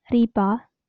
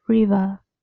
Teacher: Stops become fricative.